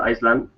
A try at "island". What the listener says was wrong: if you say Iceland that's the name of a country sorry Iceland is the name of a country island to make sure that it's really clear right has no initial S it's it's silent